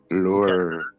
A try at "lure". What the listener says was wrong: Yeah, these rolls his R's.